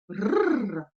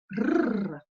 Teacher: La langue va venir faire des allers-retours au niveau du palais, derrière les dents. Rrr. Quand il est tout seul, le R va être simplement roulé une fois.